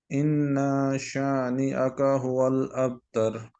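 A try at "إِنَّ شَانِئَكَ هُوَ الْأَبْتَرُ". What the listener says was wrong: इन्ना को अभी फिर भी आपने लंबा किया है, इन्ना शानिअका, इन्ना शानिअका। सिर्फ इन ना पढ़ें, इन्ना,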